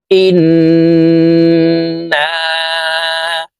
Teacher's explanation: নাকের বাঁশি থেকে তিন সেকেন্ড পরিমাণ গুন্নাহ করে ধরে রাখবো